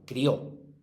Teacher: Si es crió, es un diptongo. Y sería monosílaba, crió. Porque la I no llevaría tilde y sería juntita a esta.